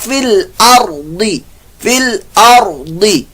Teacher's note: ضاد حروف مستعلیہ میں سے اس کو پر موٹا ادا کیجیے گا